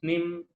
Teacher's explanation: with the voiceless nasals, it's always followed with the high-pitched vowel